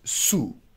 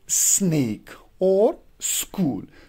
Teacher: You are taking the blade of your tongue towards alveolar ridge.